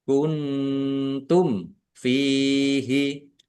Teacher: nun sukun bertemu dengan huruf ta, bacaan ikhfa, dibaca samar-samar